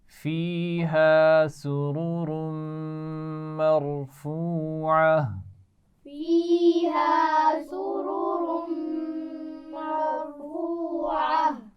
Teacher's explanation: سرر یہ دونوں را موٹے پڑے جائیں گے، ٹھیک ہے، کیونکہ پیش ہے دونوں پر، اور اس کے بعد میم پر غنہ ہوگا.